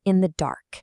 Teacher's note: This foot uses two soft, unstressed syllables before striking with a hard stress at the end. The pattern is da-da-dum. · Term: anapest